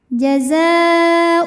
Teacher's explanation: Karena alif lam menghadapi huruf syamsiyah, yaitu huruf d, maka alif lam tidak kita baca atau dengan kata lain diidgamkan, dimasukkan. Biasa disebut dengan idgham syamsi.